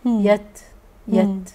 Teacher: خلي بالي في تاء هنا طالما عليها سكون اسمها همس. يت عشان عليها سكون.